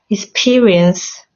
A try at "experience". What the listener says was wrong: Good. Yeah. What you said sounded more like experiments.